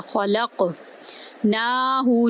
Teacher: خا کو پر کیا، لام کو قاف کے اندر داخل کیا، قاف کو ہم نے پر بھی کیا اور کاف پر کلکلا کیا ، خلق ناہو، نون کو ایک الف کے برابر لمبا کریں